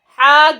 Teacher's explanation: جیم ہے ہا گلے کے درمیان سے ادا ہوگا، جب گلے کی جو درمیانی حصہ ہے اس میں آواز کو پش کریں گے تو وہاں سے ادا ہوگا ہا۔